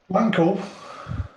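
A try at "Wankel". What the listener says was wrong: It's not pronounced with the W.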